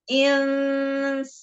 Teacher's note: dilatih ikhfa pada nun sukun ketemu sin dari depan, jangan ke tengah apalagi ke belakang. Tipiskan lagi.